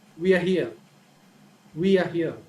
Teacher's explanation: the falling tone right we are here we are here so in the beginning the tone is high but as we move forward the tone is lower